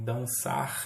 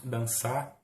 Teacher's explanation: algo que é típico do nosso falar, que é o apagamento do R final nos infinitivos